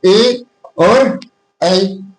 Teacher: कंठ तालु उच्चारण स्थान है। इसमें कौन-कौन से शामिल होते हैं? तो इसमें होता है ए और ऐ।